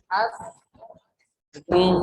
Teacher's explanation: Lidah nempel ke gigi seri yang bawah. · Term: sin